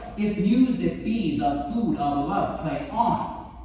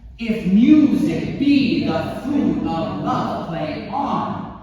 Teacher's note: there are 10 syllables in each line, the stress is on the second syllable